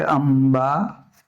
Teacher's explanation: હા અનુસ્વાર પછી જો પ હોય, ફ હોય, બ હોય, ભ હોય કે મ હોય, તો એ કયો આવશે? તો કે મ જ બોલાશે.